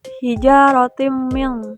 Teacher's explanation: hukum tajwidnya idgham biguna karena tanwin fathah bertemu huruf mim dilebur dengan dengung